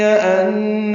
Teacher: انہ میں نون مشدد پہ غنہ ہے